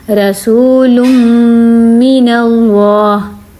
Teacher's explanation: جب میں نے کیا تو ناک میں آواز گیا ہے، غنہ ہوا ہے